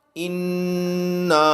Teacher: حمزہ نون زیر ان، نون الف مد زبر نا، نون کے اوپر غنہ ہے تو یہاں پر نون کے اوپر تشدید ہے تو یہاں غنہ ہوگا